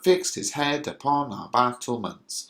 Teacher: the emphasis is on uh every other syllable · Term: iambic pentameter